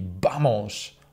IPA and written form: ˈbamos (vamos)